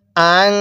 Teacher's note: নাকের বাসি দ্বারা গুন্নাহ করবেন, কেউ মুখ দিয়ে গুন্নাহ করার চেষ্টা করবেন না